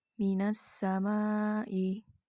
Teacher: Panjang mat wajib mutasil adalah 5 harokat.